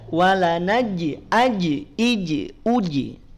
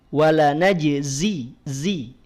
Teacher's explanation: Zai itu bukan di tengah lidah tapi di ujung lidah W najzii ya di ujung ataupun di punggung lidahnya bagian ujungnya